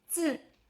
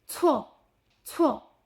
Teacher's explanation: The difference between z and c is that the extra breath of the air on c.